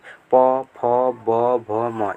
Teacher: प वर्ग में देखिए प बोलेंगे तो ओठ से ओठ लड़ेगा, ओठ से ओठ, प फ ब भ म ये आ जाएगा इसके अंतर्गत। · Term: ओष्ठ